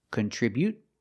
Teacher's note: just stop the air without releasing the T, or you can release the T.